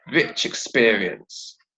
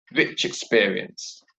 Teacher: at the end of rich, we have a consonant sound, and the beginning of experience, we have a vowel sound. So we link those two sounds together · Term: liaison